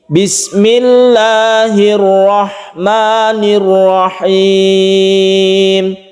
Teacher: Jadi la dan ma-nya ini adalah satu alif dan itu sama temponya. Rahim ini adalah mad aid li sukun, ini kita baca lebih panjang daripada mad tabi'i.